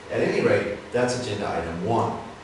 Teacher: by using some downward intonation at the end of this you will you sound more authoritative more powerful